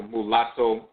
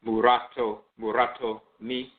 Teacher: there is no letter L in the Akan language. There's a rolling R. So, the term, for example, mulatto, which is a foreign term, then Akan person pronounce that is it is muratto, muratto me, because you're trans um interchanging that L for the R sound and so forth.